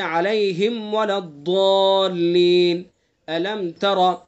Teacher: میم ساکن کے بعد میم اور با کے علاوہ کوئی بھی حرف آئے گا تو اظہار ہوگا، یعنی اس میں غنہ نہیں کریں گے